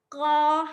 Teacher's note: Qa hampir dekat tekak, terasa dekat tekak kita ya. Dalam ya, bahagian dalam ya.